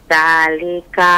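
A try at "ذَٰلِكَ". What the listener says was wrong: Bukan salika. Afwan, bukan sin. La. Digigit ujung lidahnya, Umi. Zalika.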